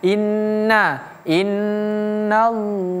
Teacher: Innallaha ingat ini nunnya tasdid. Jadi bacanya ditekan ditahan.